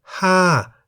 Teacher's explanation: For example, Ha, meaning the number 5, is in the falling tone because the word Ha has one syllable that begins with a high-class consonant Ho Heb and has the tone mark Mai To.